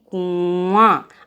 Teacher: अनुनासिक वे वर्ण होते हैं जिसको उच्चारण करते समय हवा नाक और मुंह दोनों से निकलती है। यानी जब उसको हम बोलते हैं तो हवा मुंह और नाक दोनों से निकलती है।